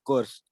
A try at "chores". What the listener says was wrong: बोलो course नहीं है chores.